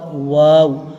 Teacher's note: واو جب پڑھتے ہیں تو ہمارے دونوں ہونٹ گول ہو جاتے ہیں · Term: ہونٹوں سے ادا ہوتا